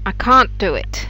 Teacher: i can't do it has two beats can't and do and this is really the real difference not whether you pronounce